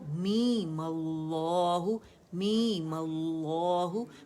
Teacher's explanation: بہت لمبا نہیں کریں گے، مد اصلی ہے اور ہم نے اسے 2 کاؤنٹ ہی پڑھنا ہے